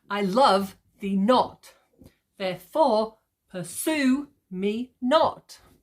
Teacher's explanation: Emphasis on every second syllable.